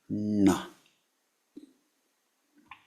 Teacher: very soft n tongue is rolled back